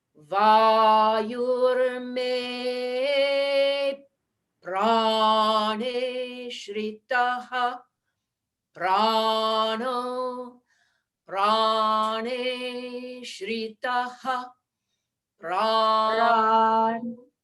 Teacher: What might help is that the pra, the way you did pra, it's the same, pra falls on the same note both times